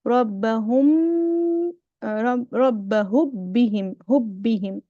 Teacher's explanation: I'm completely merging the meme into the ba. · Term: idgham